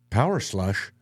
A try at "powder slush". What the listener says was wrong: Yeah, you kind of ran those two together.